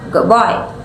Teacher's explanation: For example, if you say the phrase "good boy" quickly, the D sound in good may change slightly to sound more like a B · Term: assimilation